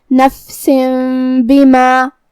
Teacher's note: کلمت بما با حروف الاقلاب میں سے ہے اور اقلاب کا معنی ہے بدل دینا، لہذا ہم یہ تنوین کو میم میں بدل کے اور غنہ کے ساتھ یہ حکم کو ادا کریں گے